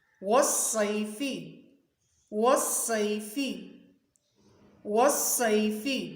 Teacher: والصیف میں واو پر منہ کو گول کر لیں گے، صاد کی آواز سیٹی والی اور موٹی ہوگی